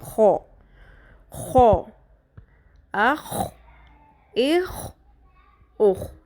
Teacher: ہونٹوں کو گول کرنا ہے اور نمبر 2 زبان کو پیچھے سے اوپر تالو کی طرف اٹھانا ہے تو منہ پر ہو جائے گا، ٹھیک ہے، موٹا ہو جائے گا.